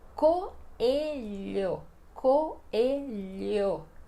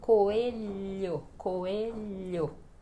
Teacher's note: Olha que o L e o H, para pronunciar este som, você precisa deslizar a sua língua no céu da boca